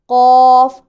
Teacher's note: मोटी आवाज़ के साथ पढ़ा जाएगा, पुर पढ़ा जाएगा, कौफ। और दूसरा काफ, दोनों के पढ़ने में साफ आवाज़ का फ़र्क महसूस होना चाहिए।